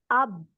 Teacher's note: मेरे दोनों होंठ मिल जाते हैं लास्ट में जब मैं बोलती हूँ हमजा बा जबर अब। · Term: होंठ का लेटर